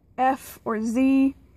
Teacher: there's air coming out of your mouth but it's coming out turbulently like hissing or buzzing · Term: fricative